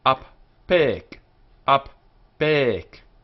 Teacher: the nun disappears and is compensated for by dagesh forte, doubling the force of that letter, in the second radical.